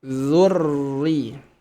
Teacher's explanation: Jangan langsung mengucapkan huruf ro di sini. Karena ro di sini tasdidnya berharokat kasroh, maka sempurna tipis.